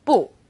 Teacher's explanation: When used on its own, 不 is fourth tone